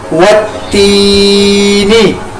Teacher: یا سے پہلے زیر آ گئی تو یہ یا مدہ کی ہوگی، اس کو ایک الف کے برابر لمبا کیا